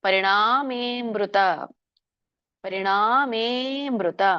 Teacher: ಮೇ ಎಳಿಬೇಕು ಯಾಕಂದ್ರೆ ಅಲ್ಲಿ ಅವಗ್ರಹ ಇದೆ